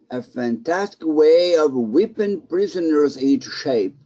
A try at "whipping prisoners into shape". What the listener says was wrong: Give me more ing. Whipping prisoners into shape.